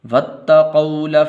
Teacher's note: اور یہ واو حروف لین میں سے ہے، لمبا نہیں کرنا